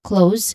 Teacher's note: So, that's a dip thong sound. And then you end with a buzzing sound, letter Z sound.